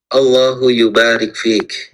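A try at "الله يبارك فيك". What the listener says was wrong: Nah, mumtaz.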